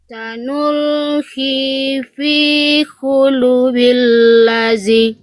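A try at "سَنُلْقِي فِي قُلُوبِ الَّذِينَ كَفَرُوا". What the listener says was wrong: Ya, sekarang lu-nya yang kepanjangan. Kecepatan. Ya, doma ketemu sukun 2 harokat. Ya, fi-nya bagus.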